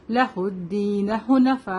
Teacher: لہ الدین حنفاء, یہاں پہ مد متصل ہے تو اس کو 5 to 6 کاؤنٹ لمبا کریں گے